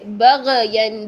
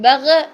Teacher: غین کی آواز کو چلائیں گے، یعنی نرمی کے ساتھ اس کو چلائیں گے تھوڑا سا. بغین اگر ہم کریں بغین یہ غلط ہوگا. · غین موٹا اور غین میں غین کو ہلانا نہیں ہے